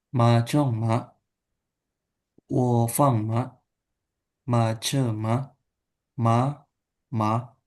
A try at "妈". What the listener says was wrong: Ini ma-nya ini kurang dipanjangin nih. Nada satu. Jadi ma.